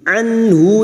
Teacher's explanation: nun sukun dibaca jelas tanpa mendengung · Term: Idhar halq